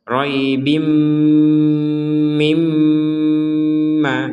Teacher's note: tanwin bertemu mim diperkuat dengan adanya tasdid. Maka kita membacanya dengung. Membacanya dengan dengung.